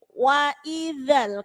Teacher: ujung lidah itu digigit